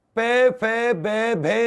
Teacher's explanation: पे फे बे भे में हमारी जीभ होठों को टच करती है, ये ओष्ठ्य व्यंजन